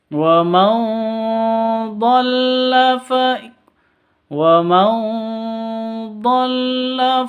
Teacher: nun mati bertemu dengan dad cara bacanya samar didengungkan siap-siap ke huruf dadnya